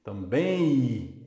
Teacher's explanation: esse M não é realizado. O que se realiza, na verdade, é o I. Também I, é um ditongo decrescente, um ditongo.